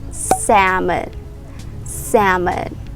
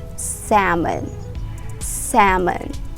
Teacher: as salmon salmon no we pronounce this word as salmon salmon you remove the l sound